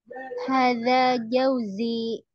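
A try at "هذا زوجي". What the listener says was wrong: Pakai zai duluan ya. Zauji. Baru jim.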